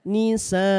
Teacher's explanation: Panjang 4 disebut dengan mad wajib muttasil. Boleh dibaca panjang 4 atau 5 harokat.